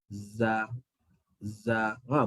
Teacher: Zai, hujung lidah, belakang gigi bawah. Ataupun hujung lidah, hujung gigi bawah. Okey, dan gigi atas, gigi bawah dirapatkan.